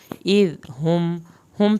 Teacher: النار ذات الوقود اذ ہم، اذ ذال نرم پڑھنا ہے، ذال کو زبان کی نوک سے پڑھنا ہے، ذال کو ہلانا بھی نہیں ہے۔